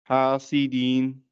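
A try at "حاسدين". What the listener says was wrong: Not deen. Don't make it long. Hasidin.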